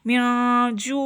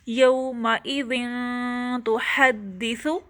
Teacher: اب یومئذ کے لاسٹ لیٹر ذال کے اوپر اس کے نیچے تنوین ہے، کسرہ کی تنوین ہے، اور اس کے نیکسٹ میں لیٹر اخفا لیٹر تا ہے تو اب ہم تنوین پہ بھی اخفا لیٹر آنے کی وجہ سے غنہ کر رہے ہیں، آواز کو چھپا رہے ہیں